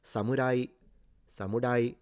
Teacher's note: Some Japanese pronounce the R like a single tip. So, it's like the beginning of a roll, but then they don't continue. Other Japanese pronounce it almost like an L. · These are all low to high pitches in Japanese. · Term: rising pitch